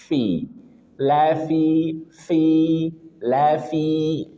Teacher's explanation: fa ujung gigi saya atas bertemu dengan perut bibir bagian bawah. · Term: huruf fa